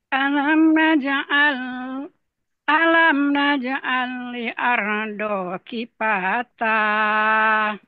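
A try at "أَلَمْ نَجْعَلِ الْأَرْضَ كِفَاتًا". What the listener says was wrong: Ya, diulang lagi alirnya. Lamnya lebih dijelaskan lagi. Alam naj'alil arda kifata. Kifata. Datar. Kifata.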